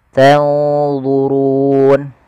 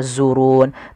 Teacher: nun mati ketemu D ikhfanya langsung ke D agak tebal